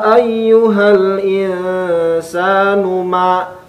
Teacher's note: nu tidak panjang, ma panjang.